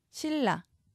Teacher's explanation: 니은이 리을 앞에서 리을로 바뀌는 유음화입니다. 신라로 적습니다. LL이 나와야 합니다.